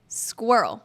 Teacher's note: In squirrel, the R is soft and not rolled. It should not sound like squirrel. · It should not have any rolling or trilling on the R. · When you say squirrel, think of SKW, like sk, w, together.